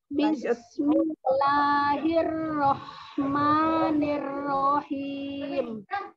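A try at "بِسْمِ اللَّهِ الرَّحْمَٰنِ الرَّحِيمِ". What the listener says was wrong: Lahnya jangan terlalu panjang. Bismillahi. Jangan tidak bismillah. Bismillahi. Jangan bismil.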